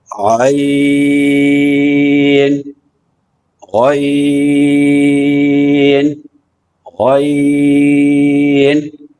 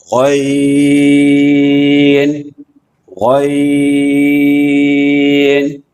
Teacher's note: حلق کے اوپر کا حصہ جو منہ کی طرف والا ہے اس سے یہ لفظ نکلے گا, اور اس کو موٹا کر کے پڑھیں گے